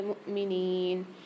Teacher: یہاں پر حمزہ کے اوپر سکون ہے، جزم ہے، تو یہاں جھٹکا دے کے پڑھیں گے۔ نون کے ساتھ یا ساکن ہے، نون کو ایک الف مقدار کھینچ کے پڑھیں گے۔